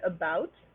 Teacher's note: it is a central mid vowel which means that your mouth is open midway your tongue is in the center of the mouth it is the sound that you hear it's the first syllable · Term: schwa